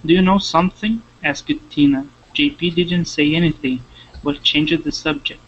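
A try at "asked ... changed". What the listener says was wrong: we're gonna say asked and changed one more time one more time get those EDS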